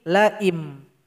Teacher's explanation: huruf nun yang sukun langsung kita ganti dengan huruf mim sukun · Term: iklab